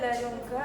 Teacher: Huruf dia ka. Cara bacaan dia bunyi nun dibaca secara sama rata antara izhar dengan idgham secara dengung.